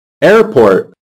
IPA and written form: ˈer.pɔːrt (airport)